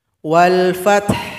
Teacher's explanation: sukunkan huruf ha berikan bunyi vokal Wal Fath walfth ada bunyi angin yang lembut